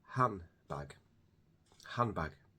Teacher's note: So we drop the D entirely. So that would make it handbag.